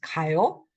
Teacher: That's how kada, you don't say kaayo, but if it's the same vowel in there, you just combine it and it becomes kayo